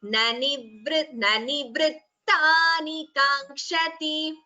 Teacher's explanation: Ta, there is a sayukta akshara. Ta, two tas have to be heard.